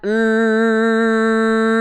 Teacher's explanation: tahan n lalu dibuka tutup hidungnya terus tahan suaranya sampai keluar kalau ketika ditutup suaranya hilang maka dia dengungan tingkatan paling tinggi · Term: gunah Akmal